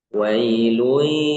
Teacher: dengungnya kurang, jadi cuman masuk ke ya aja gitu